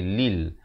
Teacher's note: Lam baris bawah bunyi li, bukan bunyi le. Bila bertemu lam jadi lil.